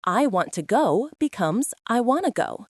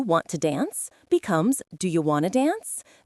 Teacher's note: Wanna comes from want to. The T sounds disappear completely. It is an example of elision, which means deleting sounds to make speech smoother.